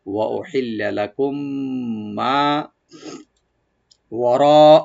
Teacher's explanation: ওয়া উহিল্লা লাকুম, লাম ওপেন থাকবে আগে, মিম সাকিনের পরে যখন মিম আসছে এখানে এদগাম আমরা স্বাভাবিক করব। লাকুম মানে দুই মিমকে টেনে আমরা মিলাই দেব · মা এখানে একালিপ টেনে আমরা ওপেন করে পড়বো